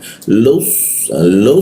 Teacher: lidahnya dilengkungkan e sehingga aliran udara agak terhambat ya.